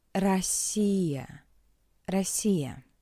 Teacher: The pronunciation is weak and shorter in an unstressed position. In an unstressed position, the letter O is read as a weak A.